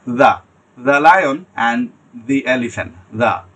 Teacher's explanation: দি এটা জিহ্বার এবং সামনের আপনার যে দাঁত আছে ওটার ব্লেডে টাচ করবে নরমভাবে। আমরা যেভাবে দাল উচ্চারণ করি, আপনি নরমভাবে সফট করে দ্য লায়ন অ্যান্ড দি এলিফ্যান্ট, দ্য।